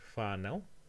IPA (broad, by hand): faːnau